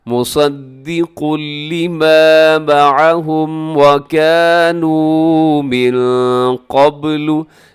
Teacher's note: मिन क़ब्लु क़ाफ मोटा रखिएगा।